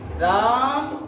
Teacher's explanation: जब पुकारते हैं तो राम के रा पे जोर दे देते हैं तेज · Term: प्लुत